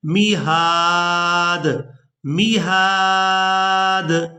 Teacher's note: दाल भी हरूफ़े क़लक़ला में से है और यहाँ पर दाल जो है ये साकिन हो जाएगा वक़फ़ की सूरत में, तो इस दाल पर क़लक़ला के साथ अदायगी की जाएगी